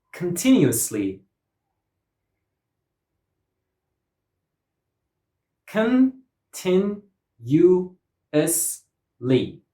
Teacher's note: 5 syllables and stress goes on the second syllable.